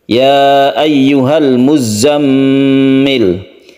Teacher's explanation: sini ada tasydid ZA yang harus kita tekan ke zatnya kemudian tasydid mim yang harus kita dengungkan kita panjangkan · Mad Jaiz munfasil kita panjangkan satu atau dua Alif